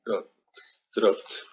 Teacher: P is voiceless. So it's a T.